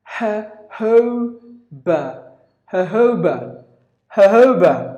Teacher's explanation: sounds like the J is replaced with the H sound